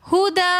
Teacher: دال کے بعد الف مدہ آ رہا ہے تو اس لیے ہم نے ہدا ایک الف کی مقدار کھینچ کر پڑھا